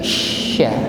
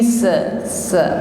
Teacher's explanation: Berikutnya huruf shin kita tampakkan sifat tafasyi, ya. Jadi angin yang keluar huruf shin ini lebih jelas daripada huruf sin. Bukan sekedar min ayyi sa, bukan, tapi sya.